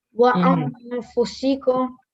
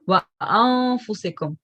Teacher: You hide the sound of the noon whilst doing ghunna. So we call it ikhfa.